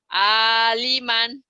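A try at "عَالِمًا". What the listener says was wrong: Panjang. Udah lumayan tinggal panjang pendeknya.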